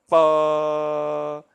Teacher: the mouth is closed at the lips, and then we suddenly open it and say pa. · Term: pa sound